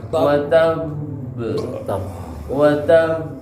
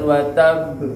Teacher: Ditahan sekitar 2 harokat baru masuk di qalqalahnya. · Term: qalqalah tasdid